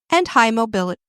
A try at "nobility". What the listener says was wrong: not mobility, nobility.